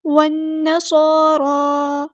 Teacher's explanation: والنصارى، صاد ہم نے پورا ادا کرنا ہے، ہیوی لیٹر ہے، را پہ کھڑا زبر ہے، مد اصلی ہو رہی ہے۔ صاد اور را کو ہم نے برابر لمبا کرنا ہے کیونکہ دونوں جگہوں پہ مد اصلی ہو رہی ہے، اور صاد اور را دونوں ہمارے ہیوی لیٹر ہیں تو پورا ادا کریں گے۔